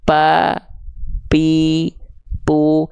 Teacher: enggak akan ada nafas yang mengalir darinya mampet nafasnya Kehalangin sama bibir yang nutup · Kalau huruf P itu, teman-teman sekalian, yang disentuhkan adalah bagian bibir atas dan bibir bawahnya. Nggak akan keluar nafas kalau begitu.